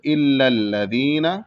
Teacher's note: لذینہ کا جو نون پہ زبر ہے اس کو بھی نہیں کھینچیں گے بلکہ جلدی پڑھیں گے، یہاں کھینچنا نہیں ہے۔